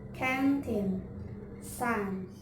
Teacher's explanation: The air is diverted through the nose and the tip of the tongue on the alveolar ridge.